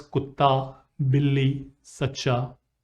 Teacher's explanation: Hindi-Urdu has a significant vocabulary in which a consonant is pronounced with reduplication.